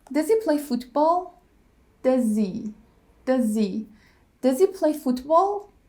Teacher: He becomes e. We drop the h and we connect it to the word before. Like, does he play football? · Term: weak forms